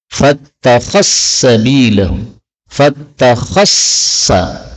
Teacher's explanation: dzal ketemu sin, ini boleh idgham, fattakhassa bilahu, fattakhassa, karena dzalnya menjadi sin.